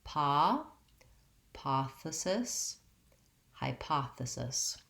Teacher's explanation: my length and my clear vowel was on the paw syllable and the other syllables were shorter and reduced